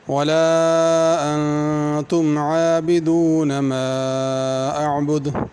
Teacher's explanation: ولا انتم عابدون ما اعبد، لا پہ مد ہے، انتم کے نون پہ غنہ کرنا ہے، اور عابدون اور اعبد ان کی عین کو صحیح ادا کرنا۔